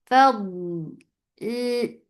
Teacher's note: Dot will get sifa of rukhawa. And it has istatala, and it is heavy.